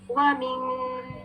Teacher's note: नून साकिन की छुपी हुई साउंड, जिसको अप्रॉक्स 2 काउंट्स देना है